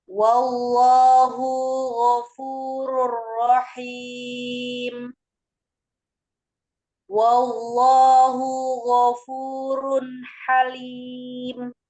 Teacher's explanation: Wallah itu ada lafuz dalalah dibaca tebal atau tafkhim. Dibaca tebal karena sebelumnya fathah.